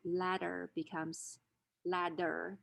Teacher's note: an alveolar stop is realized as a flap when it's after a stressed vowel and before an unstressed vowel in spelling this is often realized in terms of double letters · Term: flapping